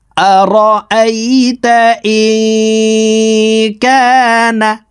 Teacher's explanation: ইকফার 15টি হরফের ভিতরে একটি হরফ কাফ আসছে, এই কারণে এই নুন সাকিনকে নাকের ভিতরে লুকাইয়া গুন্নার সহিত পড়তে হবে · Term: ইকফা গুন্না